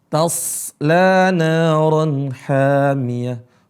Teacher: Huruf shad enggak ada qalqalahnya sama sekali. Jadi bacanya bukan seperti taslana, taslana, taslana, tapi tasla naran hamiyah.